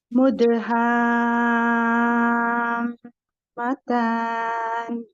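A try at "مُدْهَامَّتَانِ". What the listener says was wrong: बस मीम का ना थोड़ा सा और लंबा कीजिएगा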